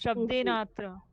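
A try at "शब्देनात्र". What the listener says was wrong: So shabdenadra, right? Shabdenadra. So in this case, if there's no he, then the two syllables become one because of the santi, right? Without this H, we have to join these two together to form a long R.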